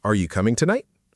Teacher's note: rising intonation at the end of a yes or no question